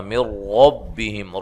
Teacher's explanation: اور یہاں نون ساکن کا ادغام بلا غنہ ہے، غنہ نہیں کریں گے